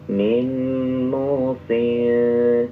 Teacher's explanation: ikhfanya tipis ya, karena bertemu dengan huruf istifal